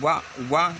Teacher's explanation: दांत और ओष्ठ दोनों की सहायता से वाह का उच्चारण हम कर पाते हैं। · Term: दंतोष्ठ